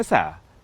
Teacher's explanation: Yang kedua, tempat keluar huruf mungkin tidak berubah, tetapi yang berubah sifatnya. Misalnya kata asa menggunakan huruf sin dengan sifat tarqiq, tipis. Jika berubah menjadi tafkhim, tebal, aso, maka huruf sin secara pasti berubah menjadi huruf sod, dan maknanya dari harapan semoga menjadi bermaksiat.